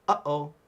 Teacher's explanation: that sudden stop before the uh-oh, that is the sound of the okina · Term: glottal stop